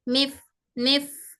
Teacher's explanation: फ भी सिफत हमस वाला लेटर है इसलिए इस एयर फ्लो हो रही है